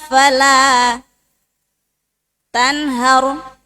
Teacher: Bukan rnya tipis tapi tebal. Karena sebelumnya berbaris fat fathah tanhar.